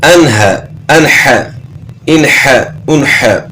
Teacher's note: نون ساکن کے بعد حروف حلقی میں سے حا ہے تو یہاں غنہ نہیں ہوگا، یہاں جو ہے نا اظہار ہوگا